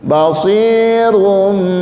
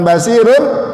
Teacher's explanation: Yang berubah tanwin, ya, tanwinnya berubah menjadi suara mim. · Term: iqlab